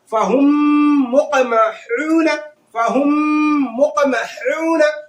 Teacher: इदगाम शफवी होगा, यानी मीम साकिन का इदगाम शफवी होगा, यानी गुन्ना होगा। फहुम मुक़महून, फहुम मुक़महून, यानी जो है गुन्ना करेंगे, है ना, और जो है इदगाम भी होगा और साथ ही साथ में गुन्ना भी होगा। · इदगाम भी होगा और साथ ही साथ में गुन्ना भी होगा। तो ये जो है इदगाम शफवी से कहते हैं।